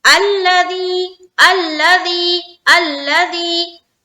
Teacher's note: لام کے اوپر جو تشدید آتی ہے نا وہاں پر رکاوٹ نہیں کرنی، بالکل جلد پڑھنا ہے. الذی الذی الذی، کوئی پڑھے الذی، غلط.